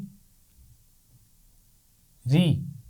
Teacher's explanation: را کی آواز موٹی نہیں ہوگی، جیسے ہم نے زبر کے ساتھ را کو موٹا پڑھا تھا